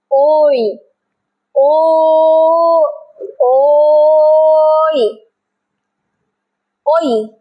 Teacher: জীব তালুকে টাচ করছে শব্দ আসছে কন্ঠ থেকে কণ্ঠ বরাবর ওই ও কণ্ঠষ্ঠ কণ্ঠষ্ঠ মানে কণ্ঠ প্লাস অষ্ঠ অষ্ঠ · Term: কণ্ঠ তালু